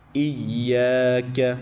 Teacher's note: کاف باریک پڑھنا ہے، اس کو موٹا نہیں پڑھنا اور اس کو کھینچنا بھی نہیں ہے کیونکہ اس کے اوپر پڑی حرکت ہے، کھڑی حرکت نہیں ہے۔